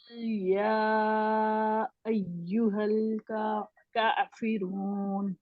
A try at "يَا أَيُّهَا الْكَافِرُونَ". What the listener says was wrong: अच्छा जू की आवाज ना आए, जू नहीं है जी, या है, यू यू यू यू। यू नहीं है ना, ऐ यू नहीं है, ऐ यू यू